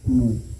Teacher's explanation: वाव मद्दा को एक अलिफ के बराबर खींच करके पढ़ेंगे